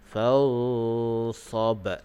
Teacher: Fansab dan waqaf dengan qalqalah kubra. Jadi bagi melantun.